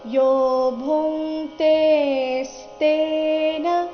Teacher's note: ಭೂ ನಂತರ ಇರೋ ಅನುಸ್ವಾರದ ಉಚ್ಚಾರಣೆ ಕ ವರ್ಗದ ಅನುನಾಸಿಕ ಂಗ ತರ ಬರಬೇಕು.